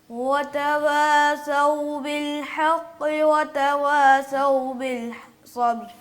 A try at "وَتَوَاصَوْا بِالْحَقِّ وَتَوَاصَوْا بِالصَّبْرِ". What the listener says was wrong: صاد موٹا نہیں کیا آپ نے، پہلے ایک مرتبہ صحیح کیا تھا لیکن دوبارہ اس مسٹیک آ گئی ہے. تھوڑا دھیان سے پڑھیے دوبارہ. وتواصوا، صاد کو موٹا کر کے پڑھیں.